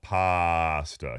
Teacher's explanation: So say the word pasta, and then elongate that first vowel.